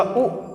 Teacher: उ का उच्चारण जैसे किया आपने तो हल्की सी जीभ ऊपर उठी, उ के उच्चारण में जीभ ऊपर उठती हुई दिखाई दी है। और हमने बोला उ, ये फिर से जीभ हमारी ऊपर उठ गई।